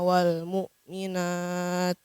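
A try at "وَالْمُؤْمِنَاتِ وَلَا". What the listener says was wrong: Coba lihat, mu'minau wa, dikasih suara ke hidung. Mu'minau wa.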